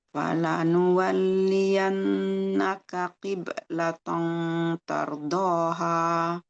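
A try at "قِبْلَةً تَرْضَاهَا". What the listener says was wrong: Qiblatan, jangan qiblatan, jangan gitu bunyinya. Tipis. Harus tipis. Kenapa tipis? Karena huruf A tipis. Kecuali kalau misalkan huruf isti'la. Kita udah belajar kan ya, huruf isti'la, huruf-huruf berat. Kalau di depan tanwin ada atau nun sukun, ada huruf isti'la, maka suara gunnahnya jadi berat.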